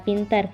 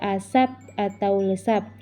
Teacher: Yang kedua, bunyi P pada pintar itu akan diucapkan berbeda dengan P pada asap atau lesap. Alasannya, P pada posisi awal diucapkan secara meletup, sedangkan P di luar posisi awal itu akan diucapkan tidak dengan cara meletup, walaupun secara fonetis dituliskan sama dan sekalipun sesungguhnya cara pembunyiannya berbeda.